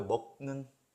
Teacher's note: 뒤에 니은이 있어요. 그래서 니은이 기억한테 영향을 줍니다. 그래서 기억이 비음이 되어야겠죠? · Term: 불완전 동화